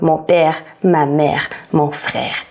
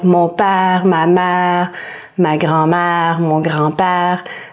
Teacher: The more neutral accent in Quebec is aèr. · So, instead of è, ère, we almost pronounce it with an a.